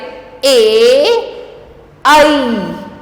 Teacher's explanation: कंठ तालू से निकलने वाले ए आई इसको हम कंठ तालव्य कहते हैं